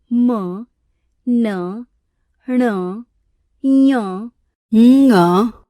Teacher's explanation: वायु मुख और नासिका दोनों मार्गों से बाहर निकलती है वे व्यंजन नासिक्य व्यंजन तथा जिन व्यंजनों के उच्चारण में वायु केवल मुख से बाहर निकलती है वे मौखिक या निर्नुनासिक व्यंजन कहलाते हैं।